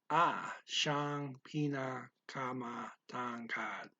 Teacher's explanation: Speaker blends siya and ang here, and the siya is pronounced sha. Okay, so kind of quickly.